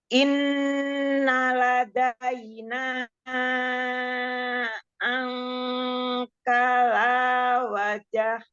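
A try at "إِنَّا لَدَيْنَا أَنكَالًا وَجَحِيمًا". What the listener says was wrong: Ya, kenapa wajahim? Itu ada mata iwat. Kafnya ada matobi'i. Kaf ada alif. Angkalau. Haknya tambahkan lagi hamas rohwahnya. Biar dia enggak kayak hamzah wajaima. Haknya jadi enggak jelas. Wajahi. Wajahi.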